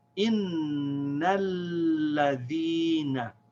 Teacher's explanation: We say innal, because the lam has a fatha. The lam connects with the noon because of its shad, and then we pronounce its fatha.